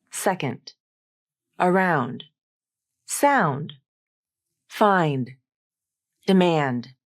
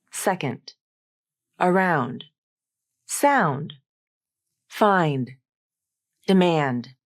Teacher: the D consonant is kind of pronounced like a t consonant